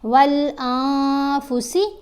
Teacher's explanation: ایک حرکت کے برابر ٹھہر کر پڑھا جاتا ہے اور نون کی آواز کو ناک میں چھپا کر پڑھا جاتا ہے